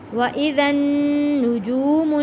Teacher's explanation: نون کے اوپر تشدید ہے، غنہ ادا کریں گے۔ وَإِذَا النُّجُومُ جو حروف مدہ ہے، 1 الف کے برابر کھینچ کر پڑھیں گے، اور نون کے اوپر جزم ہے، یہاں پہ ہم نے غنہ ادا کرنا ہے۔